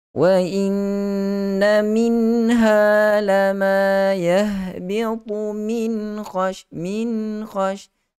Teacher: Berikan hak nun mati sifat gunnah, naikkan bagi sempurna ke khayshum dan terus sebut huruf kha, jangan lama-lama tunggu di khayshum untuk kita elakkan daripada terus berlakunya sebutan gunnah itu.